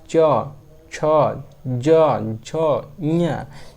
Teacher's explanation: मुंह के ऊपर वाले तालू को स्पर्श करते हुए बोली जा रही है इसलिए इसको क्या कहते हैं ताल तालू व्यंजन कहते हैं तालू